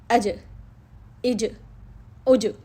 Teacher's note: جب ہم نے جیم کو ساکن کیا تو اس میں ایک شدت سنائی دے رہی ہے